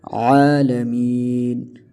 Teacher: اس کو عالمین نہیں پڑھا جائے گا، اس کو عالمین پڑھا جائے گا، عالمین، عالمین نہیں۔ عین کی مخرج سے عین جو ادا ہوتا ہے وہ گلے کے درمیان والے حصے سے ادا ہوتا ہے، اس عین کو وہاں پر زور دے کر آپ ادا کریں، عالمین، تو ہی یہ درست ہوگا۔